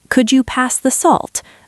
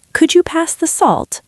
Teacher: with a rising intonation sounds like a polite request